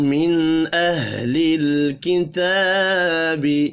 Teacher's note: نون ساکن کے بعد حروف حلقی ہے، اظہار حلقی ہوگا، غنہ نہیں ہوگا